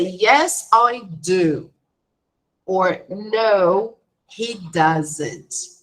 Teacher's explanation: In short answers, do and does or don't and doesn't, they are pronounced fully, right? So there is no connection, no shortening.